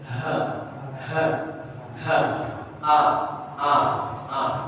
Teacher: Tempat keluarnya huruf alif ini ada di dada kita.